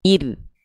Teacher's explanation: kalau ro-nya ro sukun didahului kasroh, dia dibaca tipis